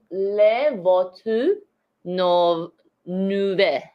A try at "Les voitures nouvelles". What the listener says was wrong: Yeah, close enough.